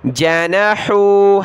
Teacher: ہا کو گلے سے نکالیں